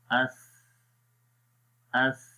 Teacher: तो जब हम अस पढ़ेंगे तो देखिए आखिर में हो क्या रहा है, सांस जारी रह रहा है। अस अस नरमी के साथ आपने पढ़ना है और ज़ुबान की नोक को सनाया उलियों के किनारों पर भी लगाना है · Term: हम्स